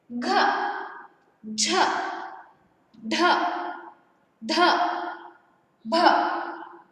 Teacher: इन व्यंजनों का उच्चार करते समय हम ध्वनि को जोर से बाहर छोड़ते हैं, इसलिए इन्हें क्या कहते हैं, दीर्घ व्यंजन कहते हैं।